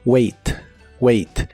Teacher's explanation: la a se pronuncia como e en esta palabra